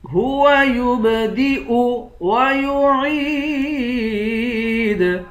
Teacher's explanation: عین کو یا کے ساتھ ملا کر یا کو ایک الف کی مقدار کھینچ کر پڑھیں گے